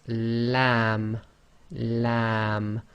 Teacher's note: So a bit more pressure on the front of the tongue. The back of the tongue is as normal, it's not raised.